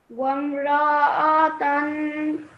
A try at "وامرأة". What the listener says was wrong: Yes, it was still slightly long. Just say it like this. Wamra'atan.